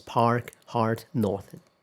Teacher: So in American English, the the R after a vowel is almost always pronounced. In most varieties of British English, however, the R after a vowel is usually not pronounced.